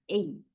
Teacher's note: High level. The tongue gliding takes place from the mid-level to the high level.